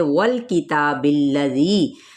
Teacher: واو کی زبر کو لام کے ساتھ ملائیں گے